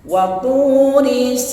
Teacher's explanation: memberikan ruang udara Nah ya menutup ruang udara dari TH ya tebal th tidak dihembuskan udaranya ditahan